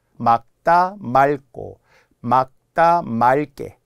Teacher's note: 리을 기억에 기억이 오면 리을로 발음하는게 예외라 그래